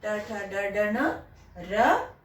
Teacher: इनका उच्चारण स्थान मूर्धन्य, मूर्धा है, एकदम ऊपर वाला स्थान जो है मुंह का, उसको वहां से उच्चारण इसका होता है।